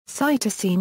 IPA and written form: ˈsaɪtɵsɨn (Cytosine)